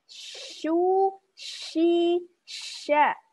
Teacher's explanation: Sifat tafashi atau menyebarnya udara di permukaan lidah.